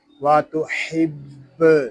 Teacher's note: با مشدد ہے، اس کو جماؤ کے ساتھ ادا کریں گے